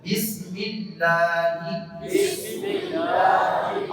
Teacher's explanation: لفظ اللہ سے پہلے زیر آ جائے گی تو یہ باریک پڑھا جائے گا